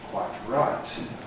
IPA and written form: ˈkwaɪt ˈraɪt (quite right)